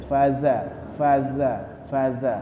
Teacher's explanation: dza itu cara menyebutkannya yaitu dikeluarkan sedikit lidahnya